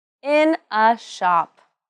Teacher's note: The stress should be on the name of the workplace in this sentence.